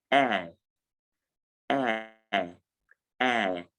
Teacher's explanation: it is realized with the air vowel sound, that is the single vowel air, and the schwa sound